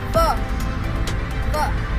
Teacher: वकारस्य दंतोष्ठ, वा का उच्चारण स्थान दंत और ओष्ठ होता है।